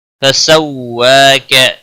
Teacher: واو کے اوپر کھڑی زبر ہے، ایک الف کے برابر کھینچ کر پڑھیں گے